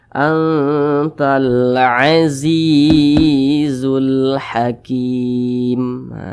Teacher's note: huruf Ya Sukun apabila dia berbaris ke bawah maka dibaca panjang maka huruf Za dibaca panjang Karena berbaris ke bawah dan posisinya tepat berada di belakang huruf Ya Sukun Mad thii panjangnya dua harakat atau kira-kira dua ketukan antalzizul Hakim